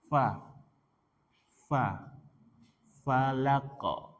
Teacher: Fa ujung gigi seri atas ujung gigi seri atas dengan bibir bawah bagian dalam.